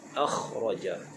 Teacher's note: huruf kha, makhrajnya di hujung kerongkong